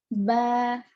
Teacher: बा, ता, सा, ये जो हुर्फ हैं, इनको सिर्फ एक अलिफ की मिकदार खींचेंगे। अभी बा, बा इस तरह से खींचेंगे, यानी कि 2 काउंट्स खींचेंगे।